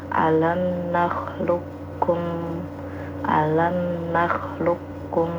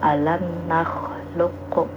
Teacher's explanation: Jadi qalqalahnya di huruf qof itu tidak dinampakkan. Jadi tidak dibaca alam naklukum gitu ya. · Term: idgham mutaqorbain